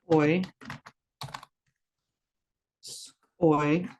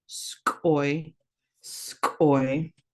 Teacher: Make sure you're making that hard glottalized K raised W.